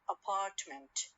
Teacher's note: i stress the second syllable or the second part of the word